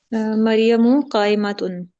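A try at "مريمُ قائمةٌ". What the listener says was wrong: लंबा नहीं करना। कायमातुन। मरियम उन्नी, मरियमु कायमातुन।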